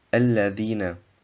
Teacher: Das Ja im Wort Alladhina wird 2 Harakat verlängert.